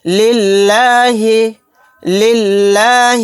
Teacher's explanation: یہاں پر لفظ اللہ کے لام کو باریک پڑھنا ہے کیونکہ لفظ اللہ کے لام سے پہلے زیر ہے